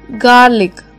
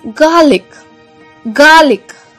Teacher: The R should be silent.